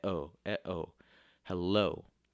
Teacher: it goes unstressed stressed like the word hello at oh oh hello that's an iambic word because there's two syllables and it goes unstressed stressed